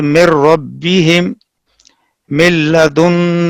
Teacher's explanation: نون ساکن اور نون کا ادغام لام اور را میں تام ہوگا